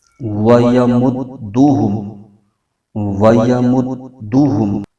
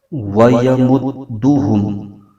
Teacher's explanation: اور آگے می پر جزم ہے، اس کو ہا کے ساتھ ملائیں گے اور یہ یوں پڑھا جائے گا وَيَمُدُّهُمْ وَيَمُدُّهُمْ۔ دال کو جماؤ کے ساتھ پڑھنا ہے کیونکہ اس میں قلقلہ ہو رہا ہے۔